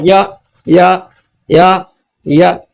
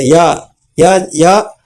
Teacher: ಯಾವ ಭಾಗದಲ್ಲೂ ಮುಟ್ತಾ ಇಲ್ಲ ಆದ್ರೆ ಅದರ ಜೊತೆಗೆ ಗಾಳಿ ಸೇರಿ ನಾಲಿಗೆ ಜೊತೆಗೆ ಗಾಳಿ ಸೇರಿ ಯ ಹೊರಗೆ ಬರ್ತಾ ಇದೆ